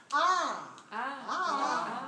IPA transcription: ɑ